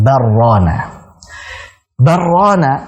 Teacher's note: Antara lam dengan ra kalau disambung akan jadi idgham. Barrana. Barrana seolah-olah ini satu kata.